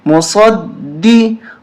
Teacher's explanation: صاد کو موٹا کریں گے اور دال پہ تشدید ہے، سختی کے ساتھ پڑھیں گے